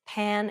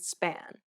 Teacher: Place your hand over your mouth and compare the words pan and span. Note how there is a burst of air in the first P, but none in the second.